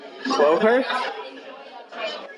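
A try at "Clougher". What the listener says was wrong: Cloher. Clover, but with an H instead of a V.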